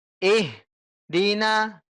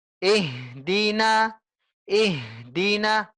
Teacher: kita harus tekan ya ihdina ihdina jangan kasih jarak bu ya jangan kasih jarak antara ih dengan di